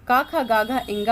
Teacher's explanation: का वर्ग की ध्वनियों का उच्चारण कंठ से होता है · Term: कंठ व्यंजन